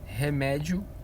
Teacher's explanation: o i é semivogal e o o é vogal · Primeiro começa com a semivogal e depois cresce para vogal, por isso que é crescente.